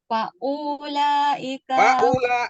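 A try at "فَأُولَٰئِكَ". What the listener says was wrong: U-nya nggak boleh panjang.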